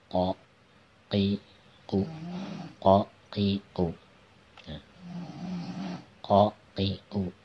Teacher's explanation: Makhrajnya, tempat keluarnya adalah di tenggorokan bagian bawah ya. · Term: huruf qa